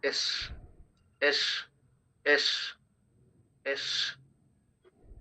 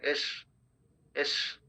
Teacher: এয়ারটা force হচ্ছে, continue হচ্ছে, কিন্তু এরপরে কিছুক্ষণ পরে থামছে, হঠাৎ করে থেমে যাচ্ছে না।